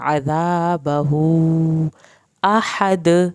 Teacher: ہا کو ہلک سے پڑھنا ہے، آخر میں دال کا کلکلا ہوگا